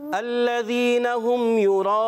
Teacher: युराऊन में रा को हमने क्या करना है, पुर रखना है, मोटा। वयमनऊन अलमाऊन, अब इस माशाअल्लाह, ये सूरत हमारी हो गई कंप्लीट।